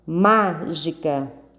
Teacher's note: são 3 sílabas e a sílaba tônica mais forte é o MA